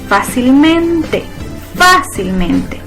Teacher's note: Si nos fijamos, la sílaba tónica la lleva en fa y como es una esdrújula, también entonces la regla me permite tildar fácilmente, ya que su sílaba tónica está en fa y eso me dice que es una sobreesdrújula.